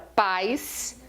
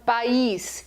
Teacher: a palavra paz, a tônica é o A. E tem um ditongo. Quando eu falo país, a tônica é o i, aí eu formo um hiato e o i está sozinho, ou seja, ele está separado e ele veio antes do S.